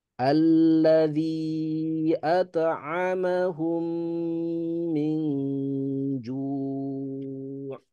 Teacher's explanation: Minju juga ikhfa dia gunnah ya. Tahan 3 ketukan. · Alladzi-nya panjang. Kemudian mim bertemu dengan mim dia idgham. Tahan 3 ketukan.